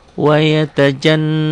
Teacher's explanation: Dengung ke hidung dan ditahan. Ada ditahannya. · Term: huruf guna